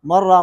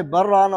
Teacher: اگر یہ اس کو ملا کر پڑھتے ہیں بغیر سکتے کے تو اس میں را میں ادغام ہوگا نون کا، مر راق ہوگا.